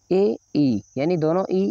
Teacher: ए, ई, यानी दोनों ई ये तालु से बोली जाती है, ये तालु, इनका उच्चारण स्थान है तालु।